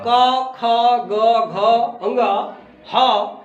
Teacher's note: ये जब बोलते हैं तो कहाँ से निकलता है? कंठ से निकलता है।